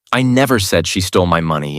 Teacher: If you stress never, I never said she stole my money, and it means you're denying it completely. But if you stress she, I never said she stole my money, then suddenly you're implying someone else did it.